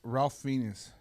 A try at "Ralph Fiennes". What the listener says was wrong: Ray, that's Ray. His name is pronounced Ray. Ray Fiennes, the